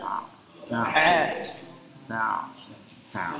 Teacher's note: Tengah, ya. Ain, ya, letaknya di tenggorokan bagian tengah, ya.